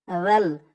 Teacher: পরে দেখুন রাল দিয়ে এই যে লাম ধরবে, মাঝখানে দুইটা আলিফ বাদ যাবে, রাল লাম জবর রাল, রাল। রালের আওয়াজটা কিন্তু একদম নরম পাতলা হবে